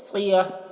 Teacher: सौद है तो सौद को पूर पढ़ते हैं, सियह। अब यहाँ पर देखिए ये इसको गोलता बोलते हैं, गोलता पर जब वक्फ करते हैं तो ये हाय साकिना से बदल जाती है, ठीक है, तो ये सियह हो जाएगा, सियह, सियती नहीं, सियह।